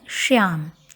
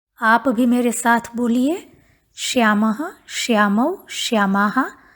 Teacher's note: ध्यान रहे तालव्य शकार का उच्चारण करना है श्याम। तालु को जिभ छुआते हुए बोलेंगे।